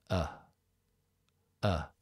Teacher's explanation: está entre la e y la o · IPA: ə